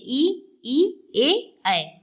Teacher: अग्र स्वर मतलब आगे का, जिसका उच्चारण हम जीभ के अग्र भाग से करते हैं